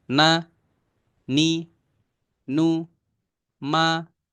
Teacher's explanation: mim dan Nun yang berharakat ya hitungannya satu saja